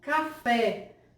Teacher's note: a segunda sílaba da palavra, fé, ela se destaca muito mais no plano da tonicidade. Café, ela é, portanto, uma sílaba tônica.